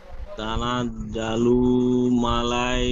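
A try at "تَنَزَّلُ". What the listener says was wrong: লু নয়, জি। তানাজ্জালুল লাম লাম পেশ লুল, একটু টান গুন্না কিছুই হবে না। তানাজ্জালুল। হ্যাঁ, আবার বলেন তানাজ্জালুল। তানাজ্জালুল। তানাজ্জালুল নয়, যা যা যা, সিটি মারার মতন উচ্চারণ হবে। তানাজ্জা। ঠিক এমন উচ্চারণ হবে, তানাজ্জা। লুল মালাইকাতু। লুল লুল লুল লুল। লাম লাম পেশ লুল। তানাজ্জালুল মালাইকাতু। মালাই বলছেন, ই হবে না, মালা।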